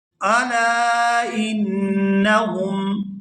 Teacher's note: یہاں لام کو الف مدہ کی وجہ سے کھینچ کر ادا کریں گے اور آگے نون پر غنہ کریں گے، کیونکہ نون مشدد ہے تو نون مشدد پر ہمیشہ غنہ کیا جاتا ہے۔